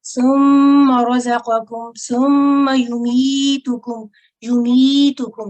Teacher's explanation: یہاں پہ سم ایک جگہ ذرا میم کو اپنے ذرا زیادہ لمبا کر دیا تھا. میم مشدد ہے، اس پر آواز کو ٹھہرانا تو ہے لیکن لمبا نہیں کرنا، ٹھیک ہے. ثم رزقکم ثم یمیتکم یمیتکم، ٹھیک ہے.